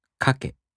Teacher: In the downstep-type verbs, the accent falls on the mora before the last one. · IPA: [kaꜜke]